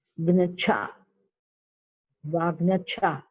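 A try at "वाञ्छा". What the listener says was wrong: It's not Vangyacha. Vancha. Vancha. Gakara is the nasal. So Wang and then Cha. Wang Cha.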